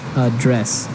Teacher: pronounce it differently so the verb a dress has the strip the stress on the second syllable